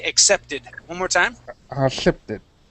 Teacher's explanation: at the end that Ed D is going to make a an ID sound instead of just a D sound okay accepted one more time accepted great okay uh the next